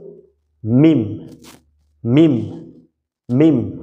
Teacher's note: তো এই জায়গাটা থেকে মিম মিম, বাটা ছিল স্বাভাবিকভাবে বলে দিলেই হয়ে যায় বা, আর মিমটার সময় ঠোঁট দুইটা একটু ভিতরে নিয়ে শুকনো জায়গা দুইটা একত্রিত করতে হবে।